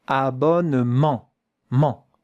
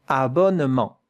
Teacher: A little bit of air has to come here through your nose. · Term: Nasal vowel